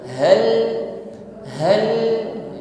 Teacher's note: di awal kalimat dengan ha yang di tengah kalimat hal hal suaranya Gema keluar dari aqsal halq tenggorokan paling bawah